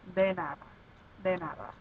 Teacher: The first one is if de is at the beginning of a word, it still sounds like a D sound, but a little bit softer or smoother. Like instead of saying de nada, you would say de nada, de nada.